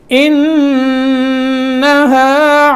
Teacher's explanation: یہاں نون مشدد ہے تو تھوڑی دیر لگائیں گے، غنہ کریں گے، اس کو غنہ بولتے ہیں، ناک میں آواز جائے گی خیشوم. انہا، ہا، یہ ہا نہیں پڑھنا، ہا پڑھنا ہے.